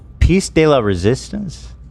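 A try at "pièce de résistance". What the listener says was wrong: De resistance. No, de la. Just de. Piece de resistance.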